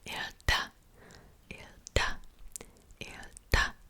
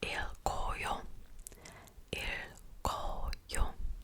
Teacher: As you can see, you don't pronounce the K when you have just the basic verb